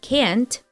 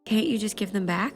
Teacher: the t is a stop T we prepare the lips to pronounce the sound but then stop the flow of air